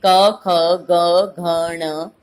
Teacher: कवर्ग की जो ये हैं वर्ण, वो सारे के सारे कंठ से बोले जा रहे हैं।